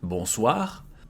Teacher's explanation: Bonsoir, here, O and I. It becomes wa, bonsoir, and we pronounce everything.